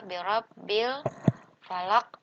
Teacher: Nah, ini disebut dengan alif lam qamariyah. Jadi, alif lamnya sukunnya dibaca jelas ya.